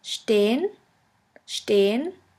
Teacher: The next letter combination is SP, SP, ST, ST, which is pronounced like the letter combination SHP and SHT